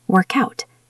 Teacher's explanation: It takes a lot of energy to stop and start again. >> So, we move the K over. It becomes work out.